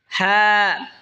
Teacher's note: হা হলকের শুরু হয়তো উচ্চারণ হবে হা।